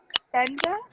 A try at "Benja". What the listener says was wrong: It's Spanish, so the J-A is pronounced like ha. So it's Benja.